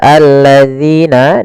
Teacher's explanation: kasrah bertemu Ya Sukun panjangnya dua harakat · alif lam yang ditulis tapi tidak dibaca lamnya sehingga langsung ke huruf lam yang kedua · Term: Mad thabiii, alif lam syamsiyah